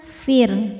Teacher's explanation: Ila firuna fir ro sukun dibaca tarqik karena sebelumnya baris kasrah